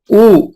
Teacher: होठ को गोल करके आप बोल रहे हो, यानी पार्शियली क्लोज्ड है ऊ